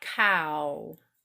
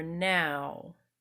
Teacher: lips while I speak it cow okay or now okay so I start wide and then I narrowed down my lips with the wah sound at the end